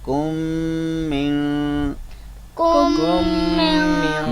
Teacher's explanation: میم مشدد۔ تو میم ساکن کو ہم میم مشدد یعنی میم شد والی اس کے اندر ملا دیں گے، ادغام کر دیں گے، تو یہ میم کا میم میں ادغام ہو جائے گا۔